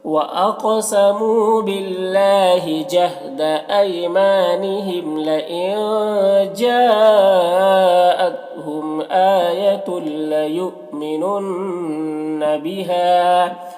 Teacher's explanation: लयुमिनुन यहाँ पर हमज़ा साकिना है, वाव की शक्ल में झटका लगेगा, नून नून मुशद्दद गुन्ना के साथ पढ़ेंगे